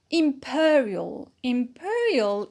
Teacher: the secondary stress on ba which is automatic secondary stress imperial imperial is an adjective as well and we put the stress on per